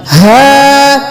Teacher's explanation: ये सीने की तरफ से अदा होगा भारी आवाज के साथ